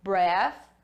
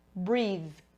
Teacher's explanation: Já aqui, quando eu acrescento o meu Magic E, eu vou ter ele com o som do alfabeto, vai ser breathe. Além de modificar para o som do alfabeto, eu também torno ele num TH vozeado, breathe. Então olha bem a diferença, breath, breathe.